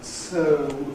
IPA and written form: tˢə̯u (two)